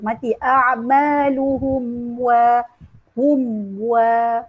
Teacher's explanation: kita kena matikan dulu huruf mim baru kita sebut huruf waw, baru kita buka mulut kita. Mati a'maluhum wa hum wa, kena satu-satu.